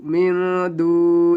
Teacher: मीम नून ज़ेर मिन, दाल वाव पेश दू, मिन दू, यहाँ पे गुन्ना होगा। नून साकिन के बाद देखेंगे यहाँ पे दाल आ रहा है तो गुन्ना करके पढ़ेंगे